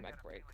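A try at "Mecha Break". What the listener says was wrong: It's Mecha. You're not pronouncing the A. It's Mecha.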